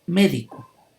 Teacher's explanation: va a llevar el acento ortográfico palabras esdrújulas llevando el acento lleva la sílaba tónica en la ante penúltima sílaba